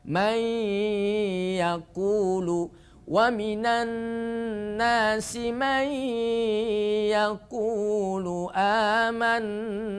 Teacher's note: ketika nun sukun bertemu dengan Ya maka suara nunnya tidak nampak masukkan ke huruf ya yang disebut Idgham bhunna dan idgham bhunna di sini namanya idgham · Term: idgham bighhunah, idgham bi gunnah